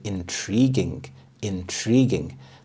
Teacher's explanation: The stress is on the second syllable, intriguing.